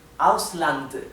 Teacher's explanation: la d final tiene que escucharse claramente